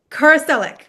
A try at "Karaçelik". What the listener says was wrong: It's close. Karaçelik. No, you guys don't have the dots under the C. That's why.